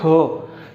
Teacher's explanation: ख। हम उच्चारण करते हैं ख, तो ख के साथ ह की ध्वनि हमें महसूस होती है आएगा नहीं लेकिन उसकी ध्वनि महसूस होगी, इसलिए ये महाप्राण है।